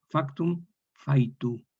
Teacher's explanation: esta consonante velar agrupada se relaja hasta tal punto de transformarse en una semivocal, una yod. Se vocaliza. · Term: yod semivocálica